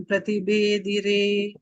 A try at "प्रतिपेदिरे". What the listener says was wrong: Not Bedire.